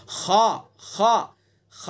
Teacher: मिन शर्रिल वसवासिल खन्नास, खा, खा, खा को मुंह भर के पढ़ेंगे, ये पुर पढ़ा जाएगा, हरूफ मुस्तालिया में से खा